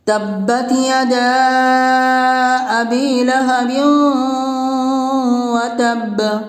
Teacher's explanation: حرف مد کے بعد حمزہ دوسرے کلمہ میں ہے، مد منفصل ہوگا، اس لیے مد منفصل کو 3 الف کے برابر کھینچ کر پڑھیں گے